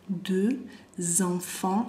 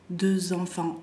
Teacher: Deux enfants, deux el número dos, va a ser deux en la pronunciación, bien redonda la boca. Deux enfants, ahí yo como lo escuchan hago z.